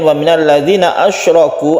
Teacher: asyraku panjangnya satu alif saja, jangan terlalu panjang karena ini adalah mad tabi'i